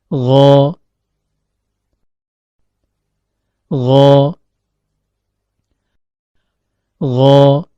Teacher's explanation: Huruf ghain keluar dari ujung tenggorokan, yaitu pertemuan antara akar lidah dengan langit-langit lunak atau yang diistilahkan dengan palatum molar.